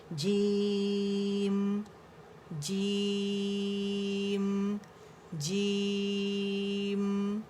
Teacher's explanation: 4 5 اینڈ 6 تک کھینچ سکتے ہیں، ٹھیک ہے، کیونکہ نام ہے اس کا تو اس میں کیونکہ مد لیٹر جو ہے وہ جیم کی آواز کو کھینچ رہا ہے، اور مد لیٹر کے بعد اگین ساکن ہے، جو اس بات کی دلیل ہے کہ اس کو زیادہ کھینچا جاتا ہے، ٹھیک ہے، کھینچا جا سکتا ہے.